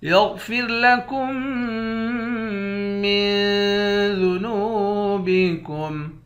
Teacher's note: نون کو واو کے ساتھ ملا کر واو کو ایک الف کے مقدار کھینچ کر پڑھیں گے، واو حروف مدہ ہے · کاف کو میم مشدد کے ساتھ ملا کر یہاں ادغام کریں گے